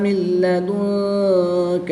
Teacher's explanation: نون ساکن کے بعد لام حروف یعملون میں سے ہے تو یہاں پر ادغام بلا غنہ ہوگا یعنی کہ بغیر غنہ کے ادغام کریں گے۔